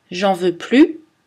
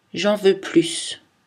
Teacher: Souvent, on laisse tomber le ne même. Alors, la seule différence entre une phrase négative et une phrase positive est la prononciation du S final ou la non-prononciation du S final